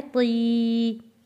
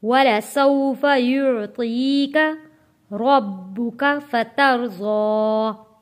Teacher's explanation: طا کو موٹا پڑھیں گے، یا ساکن سے پہلے زیر ہے، حروف مدہ ہے اور کھینچ کر ہم نے پڑھنا ہے